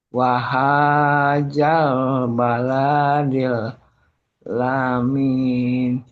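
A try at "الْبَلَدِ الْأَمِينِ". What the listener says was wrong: Bukan la, tapi a. Baladil, la-nya pendek. Wahadal baladil amin.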